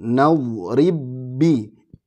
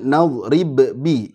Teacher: ba ketemu ba ini diidghamkan